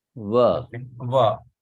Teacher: Bengalis, they don't have va. That's why they will pronounce this as ba, right? So it is va.